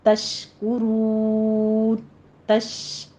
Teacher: یہ شین پر تفشی کریں گے، کاف کے پر ضمہ ہے، ہونٹ گول کر لیجئے ، تش کا نہیں ہے، تشکرون، را کو مفخم پڑھتے ہوئے